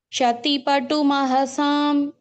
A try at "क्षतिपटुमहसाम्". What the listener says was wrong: அங்கேயும் படு சொல்லக்கூடாது, பட்டு. ஓகேவா? டி போட்டுக்கணும்.